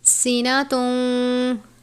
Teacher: سین حروف صفیریہ میں سے ہے، سین صاد زا، یہ تینوں حروف صفیریہ ہیں، ادا کرتے وقت سیٹی کی طرح آواز آنی چاہیے۔